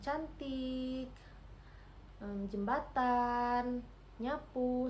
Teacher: lidah bagian tengah menyentuh langit-langit keras. Nah, bunyi yang dihasilkan yaitu je, Je, dan eng. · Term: mediopalatal